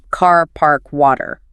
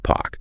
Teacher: That R at the end or before another consonant often disappears.